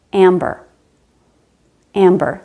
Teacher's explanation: The M is at the end of the first syllable, and the B is at the beginning of the second syllable. We do pronounce both the M and the B.